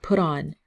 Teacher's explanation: So the T is a very tricky one because sometimes it sounds like a rolling R, like put on.